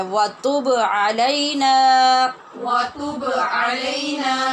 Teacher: با پہ قلقلہ اس کی صفت لازمہ ہے اس کے بغیر با ادا نہیں ہوتا. لہٰذا اس کا خیال رکھنا ہے، اس لیے ہم نے الگ الگ کر کے پڑھا ہے۔